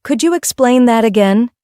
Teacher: hearing could you explain that again? with rising intonation prepares you to recognize questions